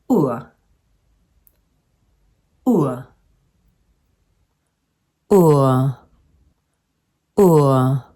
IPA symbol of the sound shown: Ʊǝ